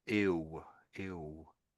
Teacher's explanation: The double L can sound a bit like a W.